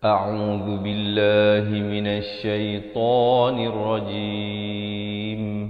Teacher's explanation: hamzah a di pangkal kerongkong, ain di pertengahan kerongkong